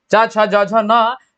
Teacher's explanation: चा, छा, जा, झा, ना, ये तालव्य होता है या तालु से बोला जाता है।